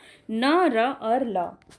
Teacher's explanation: जिन व्यंजनों के उच्चारण में जिह्वा ऊपरी मसूड़ों को स्पर्श करती है, वहाँ पे वत्स्य व्यंजन होता है। मसूड़ा यानी कि दांत के जस्ट जो ऊपर में जो आपका मसूड़ा होता है उस पर टच करता है।